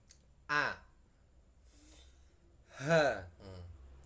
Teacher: Makhraj tenggorokan ini ada beberapa huruf, 6, ada 3 tempat. Yang pertama tenggorokan bawah atau pangkal tenggorokan. Ini tempat keluarnya huruf hamzah dan ha.